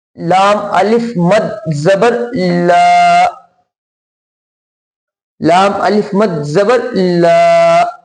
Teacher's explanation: چھوٹی مد کی بنیاد پر اور الف مدہ کی بنیاد پر لام کو ہم کھینچ کر پڑھیں گے